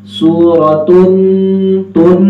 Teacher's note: गुन्ने की जो आवाज़ होती है वो नाक में से वाज़े नज़र आती है, जैसे कि सूरतुन, तुन नून से वाज़े हो जाता है।